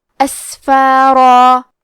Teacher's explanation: آخری میں را پہ تنوین زبر ہے، ہم یہ کلمہ پہ رکے تو تنوین زبر پہ مد الف سے رکیں گے تو ہمیں را کو اور مد الف کو دونوں کو بھاری آواز میں ادا کرنا ہے